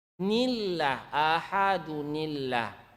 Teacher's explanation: Sekarang karena dia berbaris bawah, nillah jadi tipis ya